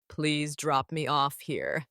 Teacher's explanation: please drop me off here with stress on off